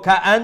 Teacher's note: নুন মুশাদ্দাদুর গুন্না হইব